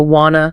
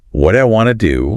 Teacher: Then you hit want to and the t's just completely drop off the map. It's a process called elision.